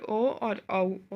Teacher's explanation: ओ और औ, ये दोनों हैं कंठोष्ठ से बोले गए